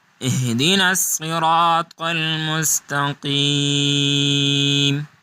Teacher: اب الصراط جو ہے اس میں صاد، را اور طا یہ تینوں جو ہیں یہ بولڈ لیٹر ہیں، موٹے حروف ہیں اور ان کو پر اور موٹا پڑھا جائے گا۔